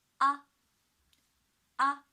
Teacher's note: the first tone on the 5th high pitch, high and flat, naturally prolonged